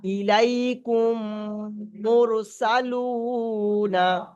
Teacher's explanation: মিম সাকিনের পরে যদি কোনো দ্বিতীয় মিম আসে তাহলে প্রথম মিমটাকে দ্বিতীয় মিমের সঙ্গে মিলিয়ে গুণনা করে পড়তে হবে। এইটার নাম হলো ইদগামে সাফাবি।